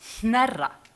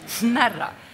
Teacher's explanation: you get this unvoiced N.